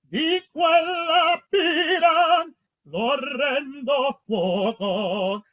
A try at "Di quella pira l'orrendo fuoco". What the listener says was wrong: Don't clip off the D. The opening D. I'm hearing di quella. No, just di quella pira. Just don't clip. You staccatoed it.